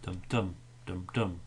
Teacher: so we have this unstressed stressed unstressed stressed unstressed stressed and then we have two stressed beats in a row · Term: Falling meter